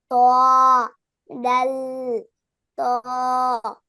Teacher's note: জিহ্বার আগা সামনের উপরের 2 দাঁতের গোড়ার সঙ্গে লাগাইয়া ত ডাল ত